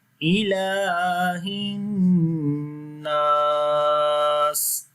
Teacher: So here we long this lam due to standing fatha on it, and on the noon again we make ghunna sound.